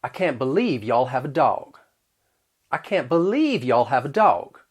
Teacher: were to say i can't believe you guys have a dog i'll use that off-glide schwa in words like can't and have